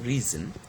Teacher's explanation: in the word reason the first syllable is stressed